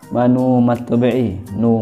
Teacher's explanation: Kenapa? Karena sebelum wawu sukun itu ada harokat domah, maka dibaca panjang 2 harokat